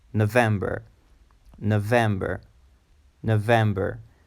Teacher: It's a three-syllable word and with the emphasis on the second syllable